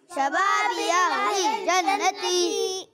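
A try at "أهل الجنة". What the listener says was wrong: ती को खींचेंगे नहीं, जन्नती, ठीक है। अहलिल जन्नती।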